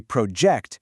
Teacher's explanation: If you say project, emphasizing that first syllable, it's a noun, a physical thing or a plan you're working on. But if you say project, hitting that root really hard, it becomes the active verb of throwing forward. The force shifts just by changing your breath.